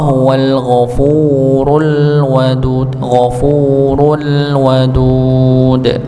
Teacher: al ghafurul wadud, ru-nya dibaca tebal